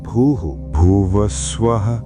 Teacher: ప్రతి అక్షరం చివర ఉన్న విసర్గ శబ్దాన్ని అనగా హ అనే సౌండ్ ని గాలితో పాటు సున్నితంగా బయటకు వదలండి. ఇక్కడ స్వల్ప విరామం ఇవ్వండి.